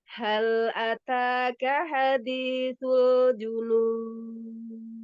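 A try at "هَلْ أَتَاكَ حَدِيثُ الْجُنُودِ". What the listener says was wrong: Hal ataka hadithu, kafnya jangan dinaikkan. Hal ataka hadithul junud.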